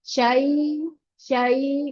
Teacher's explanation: Membacanya syai, syai karena dia panjangnya 1,5 harokat. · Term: lin